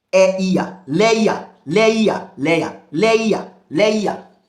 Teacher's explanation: 3 vowel sound pronounced as one syllable. Triphthong.